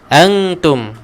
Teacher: Antum, nun mati juga bertemu ta, ikhfa hakiki, dengungkan dia.